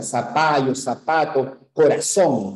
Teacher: pronunciamos zapato con una s por supuesto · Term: ceseo